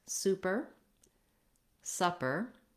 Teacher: super and supper both have the stress on the first syllable so in the word super the stress is on the su